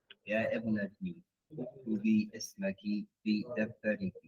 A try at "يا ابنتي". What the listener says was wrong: You have two choices. Say يا بنتي. If you're going to say ibnati, you have to go straight to it. Ya binati. Not ya ibnati. Ya binati. But you have to stop clearly. Ya ibnati. But you can't say ya ibnati. No, you can't say ya ibnati. If you stop ya ibnati, no.